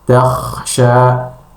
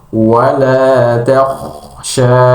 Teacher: tebalkan Kha dan tipiskan huruf ta. Jadi wala takhsha, ya, ta-nya tipis, Kha-nya tebal.